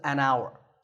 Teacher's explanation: We don't say hour, we say hour. The first sound is an ow sound, which is a vowel sound, so this is an hour.